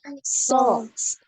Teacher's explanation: pangkal lidahnya naik, permukaan lidahnya naik juga ya, sehingga suaranya jadi lebih bulat